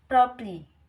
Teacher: an example of middle syllable omission in fast speech